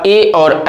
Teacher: ए और ऐ हमारा जो है वो कंठ और तालव्य से उच्चारण होता है। कंठ से भी और तालु की सहायता से करते हैं।